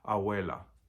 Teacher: the B or the V between vowels doesn't quite sound like a B, it sounds almost like a W